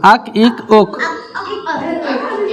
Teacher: हाँ बारीक नहीं बोलना, काफ को पूर बोलना।